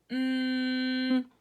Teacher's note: letter sound for the sound for the letter M its mm you pressed your lips together